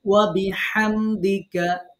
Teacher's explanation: হা কিন্তু এটা গলা চেপে যে হা, সেই হা। যদি এখানে অন্য হা হয়ে যায়, হায়ে হাওয়াজ হয়ে যায়, অর্থ পরিবর্তন হয়ে যাবে। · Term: হায়ের মাখরাজ